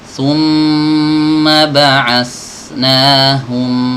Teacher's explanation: Summa ini harus ditahan dulu, ya, bukan hanya masuk cepet, tapi ditahan dulu sejenak, ya. Summa ba'asnahum. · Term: tasydid